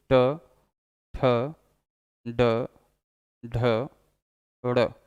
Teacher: ट, ट पर जीभ पीछे टर्न हो रही है, जबकि री में वाइब्रेशन होता था, री में वाइब्रेशन था इसलिए वो मूर्धा था। ट पीछे की तरफ टर्न कर रहा है, पीछे की तरफ जीभ मुड़ रही है, इसलिए ये मूर्धा है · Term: मूर्धन्य व्यंजन